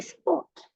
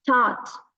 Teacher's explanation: so when it's in the middle, don't pronounce the R at all